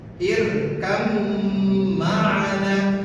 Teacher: Cara membacanya dengan seakan-akan mentiadakan ba, langsung memasukkan kepada mim. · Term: idgham